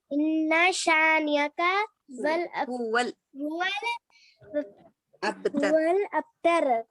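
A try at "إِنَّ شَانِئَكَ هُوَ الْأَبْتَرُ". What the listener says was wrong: हाँ लास्ट बोले नहीं, हुवल बोल के वही बल्ला, हुवल बोले तो वाव पे तस्दीद आ जाती, वैसा नहीं, हुवल अबतर।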